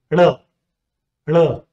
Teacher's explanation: The first one is R, a retroflex flap sound. The tongue curls back and touches the hard palate up, and with the sound, it falls.